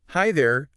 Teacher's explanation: greetings like hi there, often have this kind of rising and then slightly falling pitch · And the little fall at the end makes it sound approachable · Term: intonation